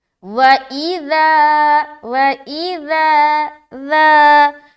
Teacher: ذال میں 2 باتوں کا خیال لازمی رکھے، سیٹی والی ساؤنڈ نہیں آنی چاہیے، دوسرا یہ کہ حرف سختی کے ساتھ ادا نہ ہو۔ اگر سختی کے ساتھ ادا کریں گے تو وہ ذال زا بن جائے گا، اور سیٹی والا جب یہ کریں گے تو بھی الگ ہو جائے گا، زا بن جائے گا۔